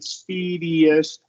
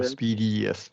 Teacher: emphasizing that Y sound before the schwa